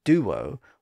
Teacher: often pronounced as duo with a slight W sound in the middle